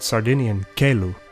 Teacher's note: Uniquely, Sardinian doesn't do this, so G and C stay close to their original K and G sounds before E and I in Sardinian